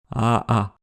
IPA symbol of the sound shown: aʔa